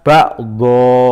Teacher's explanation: Merubah harokat fathah tanwin menjadi fathah di akhir ayat, dibaca 2 ketukan atau 2 harokat. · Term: mad iwad